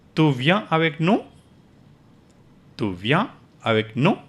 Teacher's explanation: So with nous, your voice goes up. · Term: rising intonation